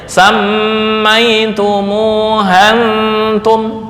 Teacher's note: Misal antum ini bukan hamzah qata', maka cara membacanya samaitumuhantum, langsung ya.